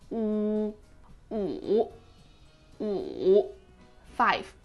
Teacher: U, just like wood, but really elongate the sound.